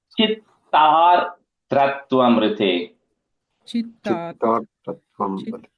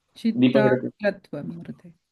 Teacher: Yeah, the ir sound, the r sound is coming in the da, not in the ta